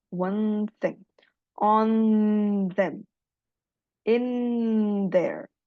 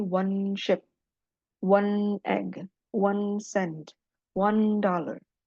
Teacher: Jadi n-nya itu langsung bersentuhan dengan dental.